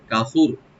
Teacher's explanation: আর এখানে যদি আমরা থেমে যাই, লাস্টের তাটা সাকিন হয়ে যাবে এবং ডিপ হবে